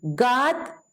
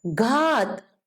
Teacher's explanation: अंतर देखिए मैं कैसे बोलती हूँ। ग पे मैं जोर नहीं दूंगी, घ पे मैं जोर दूंगी